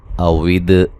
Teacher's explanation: اوید واو کو ادا کرتے ہوئے ہونٹوں کو گول کرنا ہے، نہ تمام ہونٹوں کو گول کر کے نہ تمام ملنے سے واو ادا ہوتی ہے۔ دال کو ہلا کے پڑھیں گے، قلقلہ ہے